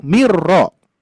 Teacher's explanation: Maka dari itu kalau di dalam idgham itu ya, kalau misalkan ada nun mati, nah ini min misalkan ya bertemu dengan ro. Nah, idgham kan minnya akan menjadi hilang. Makanya dua huruf menjadi satu